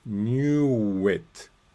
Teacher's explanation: The w continues to the next word. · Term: off-glide W